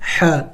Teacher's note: ح حروف حلقی میں سے ہے اور وسط حلق سے ادا ہوتا ہے